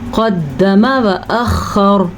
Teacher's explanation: قاف کو موٹا پڑھنا ہے آپ نے، وأخر خا کے تلفظ کا خاص خیال رکھنا ہے اور را کو بھی پر پڑھنا ہے